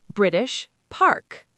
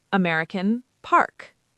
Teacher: >> This is called a nonrootic accent. We don't roll or emphasize final Rs.